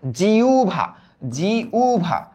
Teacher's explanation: একটু খেয়াল করো, হ আর ব এই যুক্ত ব্যঞ্জনের আগে যদি একটা রস্বই যুক্ত ধ্বনি আমরা দেখি, রস্বই যুক্ত ধ্বনি আমরা যদি দেখি, তবে একটু মনে রাখতে হবে এই হয়ের উচ্চারণটা হয়ে যাবে উ এর মতো এবং বয়ের উচ্চারণটা হয়ে যাবে ভ এর মতো। তাহলে এটার উচ্চারিত রূপ কি হবে?